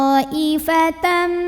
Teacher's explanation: Hamzahnya yang i ada dalam satu kata yang sama, yaitu kata ta'ifatan. Maka to-nya dipanjangkan boleh 4, boleh 5 harokat. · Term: mad wajib muttasil